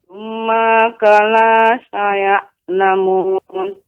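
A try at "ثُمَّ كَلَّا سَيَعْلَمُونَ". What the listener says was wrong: Kalla di sini ada tasydid, Ibu. Tasydid. Thumma kalla saya'lamun. Kalla. Jadi dibaca dengan kalla, tidak kala, namun kalla.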